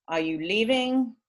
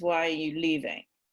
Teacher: a yes no question rising and a wh question falling